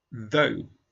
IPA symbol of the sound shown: ðəʊ